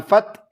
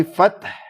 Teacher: Hati-hati nih, haknya harus bunyi. Jangan fat gitu aja, tapi fath ya.